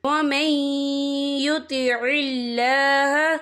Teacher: صِرَاطًا مُسْتَقِيمًا وَمَن يُطِعِ اللَّهَ، یا دیکھیں وَمَن، یہاں نون ساکن ہے، نون ساکن کے بعد جو ہے یا آ رہا ہے اور یا جو ہے حروف یرملون میں سے ہے، تو یہاں پر ادغام ہوگا، تو ہم اسے تھوڑا سا غنہ کے ساتھ پڑھیں گے